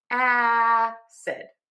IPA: ˈæsɪd